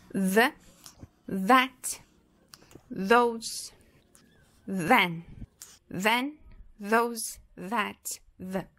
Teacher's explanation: ele vai ter esse som de inseto, que tem essa vibração das cordas vocais.